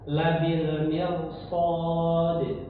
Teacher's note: ro walaupun didahului kasrah tapi kalau karena bertemu huruf shad yang berharakat fathah maka dibaca tebal